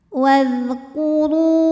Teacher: huruf ra dibunyikan secara tafkhim karena ra berbaris dhammah, maka dibacanya tebal.